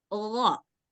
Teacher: Sedangkan huruf gha yang ini nggak ada suara dahaknya. Dia harus bersih.